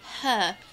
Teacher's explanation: Say her like a British person. Huh. Oh yeah. Huh. Just drop the R entirely.